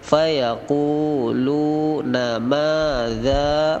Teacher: ma panjang, za-nya panjang 6 harokat